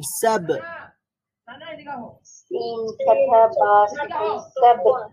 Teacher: বা শাদীদার হরফ, কলকলার হরফ, সাউন্ড পরিপূর্ণ বন্ধ হয়ে যাবে, আবার একটা পাল্টা আওয়াজ তৈরি হবে।